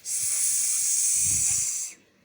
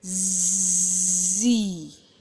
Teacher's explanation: S sound, it is voiceless sound